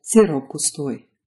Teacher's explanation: So while a word like sirop on its own ends in a p, if you combine it with gustoi, you get sirop gustoi. That p turns into a b.